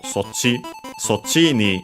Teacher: Sochi is a contraction, which is atypical in the sense that it becomes accented on the last mora · we can actually hear the accent actually. So low, high, high, low.